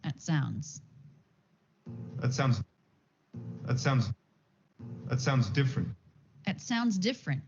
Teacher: So a 4-word sentence here, sorry, a 4-syllable sentence, and the middle two are stressed. Unstressed that, sounds stressed, diff stressed, unstressed, different.